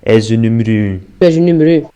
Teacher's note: as vogais fechadas dos Açores, muito patentes no som U, que eles pronunciam quase como U francês